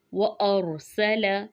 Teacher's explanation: हमज़ा ज़बर रा, रा साकिन है लेकिन मा कबल ज़बर है तो रा को मोटा पढ़ेंगे।